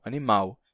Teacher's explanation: no Brasil, hoje, quase todos os brasileiros pronunciam animal com som de U no final, animal, e não mais animal.